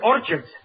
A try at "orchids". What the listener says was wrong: It's not orchids, it's orchids. The CH is pronounced like K.